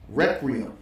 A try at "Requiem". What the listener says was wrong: You said Requiem, like Rec Room. Say Requiem.